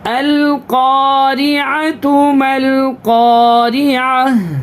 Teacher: وقف کی حالت میں گول تا کو ہا بناتے ہیں